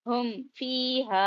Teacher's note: ہم ایسا آواز کو غنہ یا اخفا کچھ بھی نہیں کریں گے، ٹھیک ہے، میم کی آواز کو نارمل ظاہر کریں گے